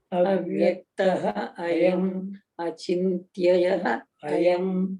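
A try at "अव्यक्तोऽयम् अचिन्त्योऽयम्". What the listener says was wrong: Now try to club two together. Avyaktoyam achintyoyam.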